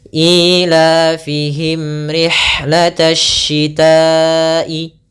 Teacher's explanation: Ada sebuah huruf, mim yang tidak bersuara, bertemu dengan huruf ra. Ketika mim yang diam bertemu dengan ra, kita menyebutnya Izhar Syafawi. Artinya, bunyi huruf mim harus dibaca dengan jelas. · mim mati bertemu dengan ra, maka kita namakan dengan bacaan izhar syafawi. Yaitu suara mimnya harus kita baca dengan jelas.